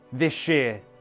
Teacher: The S and Y combine into a sh sound.